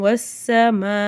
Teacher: இந்த இடத்துல பெரிய மது வரதுனால அஞ்சுல இருந்து ஏழு அலிஃப் வரைக்கும் நல்லா நீட்டி ஓதணும்